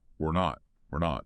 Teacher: Reduces to we're, often sounding like an unstressed we're. And that T on not is usually a stop T. Tongue up, stop the air.